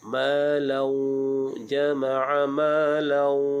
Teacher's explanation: Malan, kita berjumpa dengan hukum idgham ma'al gunnah. Dengung dua harakat